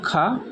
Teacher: यानी कि पहला ऑप्शन हमारा सही होगा खा, जो है हमारा स्पर्श व्यंजन, कंठ ध्वनि, अघोष और महाप्राण है